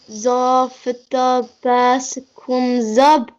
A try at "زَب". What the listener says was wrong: You are read dub. It's zab.